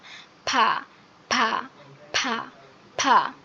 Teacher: দুই ঠোঁটের একসাথে উপর নিচে করে লাগাই আমরা উচ্চারণ করব